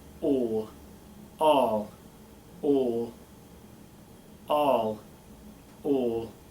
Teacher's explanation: Bring that lip forward for the British version.